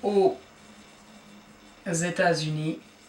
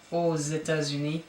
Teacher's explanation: then you have a liaison once again with a Z sound